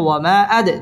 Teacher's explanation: ওয়ামা জবরের বাম পাশে খালি আলিফ, মদের হরফ, মদের হরফের উপর চিকন চিহ্ন, বামে হামজা, মধ্যে মুনফাসিল, 3 আলিফ টেনে পড়তে হবে। ওয়ামা আদ, দাল কলকলার হরফ, ধাক্কা দিয়ে পড়তে হবে। আদ র, র পুর হবে এবং র খারা জবর, এক আলিফ টান দিয়ে পড়তে হবে।